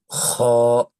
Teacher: যে অক্ষরটি আপনারা এক নাম্বার ঘরে দেখতে পাচ্ছেন অক্ষরটির নাম হচ্ছে খ এ অক্ষরটি কন্ঠনালীর শেষ থেকে কন্ঠনালীর শেষ বলতে আমরা এই জায়গাকে বুঝাচ্ছি কন্ঠনালীর শেষ থেকে একটু খরখরি রকমের আওয়াজ বের করে উচ্চারণ করতে হয়